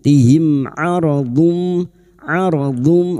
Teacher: mim sukun bertemu ain idhar syafawi. Mim sukun dibaca jelas tanpa mendengung. Tihim aradum aradum huruf dod dung tanwin bertemu mim idgam bighuna masuk ke huruf mim dan mendengung selama tiga harakat. · mim sukun bertemu ain idhar safawi. Mim sukun dibaca jelas tanpa mendengung.